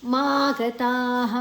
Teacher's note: ಮ ದೀರ್ಘಾಕ್ಷರ ತ ದೀರ್ಘಕ್ಷರ ನಂತರ ವಿಸರ್ಗದ ಉಚ್ಚಾರಣೆ ಹ